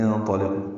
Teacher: انطلقوا میں نون ساکن کے بعد تو آنے کی وجہ سے اخفا ہے، یاد رہے یہ حمزہ عارضی ہے۔ انطلقوا تو پر ہے، لام باریک ہے، قاف پر ہے، قو واو مد ہے، اور اس کے بعد حمزہ دوسرے کلمے میں آنے کی وجہ سے مد منفصل، ہم اس کو 4 حرکات لمبا کریں گے۔